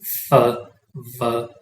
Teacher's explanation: उनमें एक lip involve होता है, ठीक है, नीचे वाला लिप और अपर टीथ, जैसे फ, व, ठीक है। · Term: लेबियोडेंटल